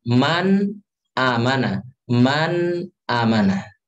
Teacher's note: ketika ada nun mati bertemu dengan huruf hamzah, maka pada kondisi ini kita baca dengan izhar, ya jelas